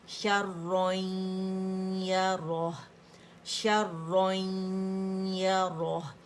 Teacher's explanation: را جو ہے اس کی فتح کو قائم رکھنا ہے، اس کو موٹائی سے ادا کرنا ہے